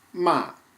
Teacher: fourth tone it's a striking tone so we're going from the top down